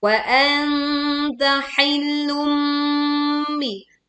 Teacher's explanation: Wa anta, tekan nun sukun ya, kita menyamarkan nun sukunnya. Bacaan sengau, bacaan dengung